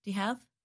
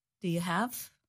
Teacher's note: The word you becomes reduced to the sound ya.